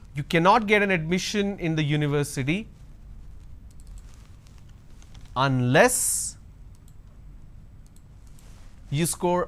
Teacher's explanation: So unless is the word which should take the stress. So that's a sentence stress.